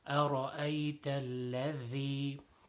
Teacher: The second word, الذي, أرأيت الذي, most common mistake in this is the dhal. Dhal is not pronounced properly, so tip of the tongue and tip of the upper two front teeth.